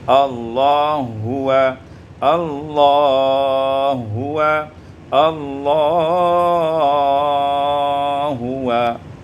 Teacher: idghamul ha fil ha, diidghamkan ha pada ha menjadi Allah huwa, Allah huwa, Allah huwa.